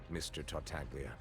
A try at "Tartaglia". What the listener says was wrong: Your Honor, the G is silent, please.